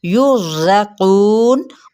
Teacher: रॉ पुर पढ़ा जाएगा क्योंकि उससे पीछे वाले हर्फ पर क्या है, ज़म्मा यानी पेश है